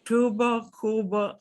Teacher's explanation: when the B or the V comes in between two vowels, it will be even softer. It will be so soft that if you put a paper in between your lips, you would barely touch the paper.